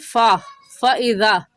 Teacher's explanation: इस आयत में फ़इज़ा फ़ा का मखरज आपको बता दूं, फ़ा का मखरज ये है कि ऊपर वाले दांतों की नोक नीचे वाले होंठ की अंदरूनी तरी को लगाने से फ़ा निकलता है